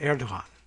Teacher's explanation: We'll throw a little bit of very breathy H in that.